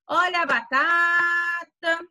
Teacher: a penúltima sílaba, ela foi mais forte, ele falou com mais forte. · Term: sílaba tônica